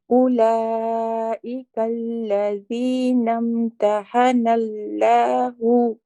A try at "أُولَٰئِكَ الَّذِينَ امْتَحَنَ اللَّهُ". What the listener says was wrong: Oh, you lost the heavy lam there, Auntie. Let's try that again.